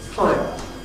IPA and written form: ˈfaɪə (fire)